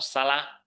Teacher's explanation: The word for vowel in Thai is sara, sara. You might want to pronounce it with an L, sala. Perhaps not with an English R, sara, because Thais don't have that sound.